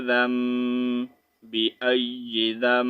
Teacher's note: نون کو سائلنٹ کریں گے میوٹ کر دیں گے ٹھیک ہے نون کو نہیں پڑھیں گے چھوٹی میم کو جو